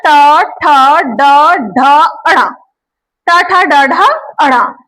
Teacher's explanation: ये है मूर्धा, इनका उच्चारण स्थान, इनका जो हमारा उच्चारण स्थान है वो है मूर्धा